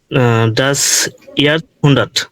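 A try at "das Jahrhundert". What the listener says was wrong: না, এখানে ইয়ার হুন্ডার, এখানে তো আসবে না। এখানে তো আসার কারণ হচ্ছে আর এবং এই যে এর এবং সেট একসাথে আছে, এজন্য এখানে তো আসছে।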